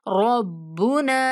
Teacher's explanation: बा मुशद्दद सख्ती से पढ़ेंगे और ना को थोड़ा खींच के पढ़ेंगे